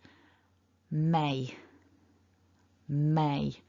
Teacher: We need to bring both lips together and there's got to be vibration in the nose for that m.